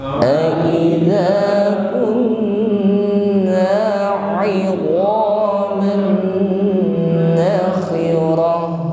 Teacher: ada tanwin bertemu dengan huruf nun, maka dibaca idgham bi gunnah, masuk dengan berdengung. 'idhaman nakhirah, bukan hi bersih ya, nakhirah ya, bersama.